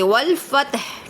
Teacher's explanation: آیت ختم ہو رہی ہے تو آگے پیش کو جزم میں تبدیل کر دیں گے، والفتح۔ ٹھیک ہے، فتح کو کوشش کریں کہ لاسٹ میں ہا نکالیں۔